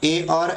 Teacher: कंठ और तालु से मिलकर उच्चारण बनता है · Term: कंठ तालव्य